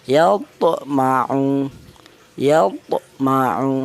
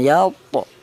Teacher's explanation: dipantulkan yalto gitu. Itulah namanya qalqalah, ada suara pantulan.